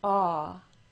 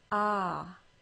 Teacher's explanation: Notice that my lips move more and become more tense for the AW sound word.